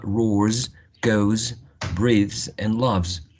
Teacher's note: all of them ending in voiced consonant sounds